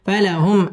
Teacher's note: মিম সাকিন ইজহারে খাস গুন্না ছাড়া পড়তে হবে